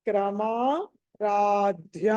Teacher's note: ధ అన్నది ఒత్తి పలకాలి, ధనుష్ అది ధ, మహాప్రాణము